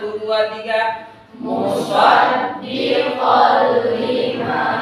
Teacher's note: Enggak ada karena dimasukkan dilebur tanwinnya ke huruf lam. Biasanya suka ditandai dengan syiddah. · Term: idgham